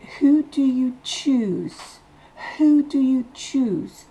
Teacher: On baisse la voix en fin de phrase.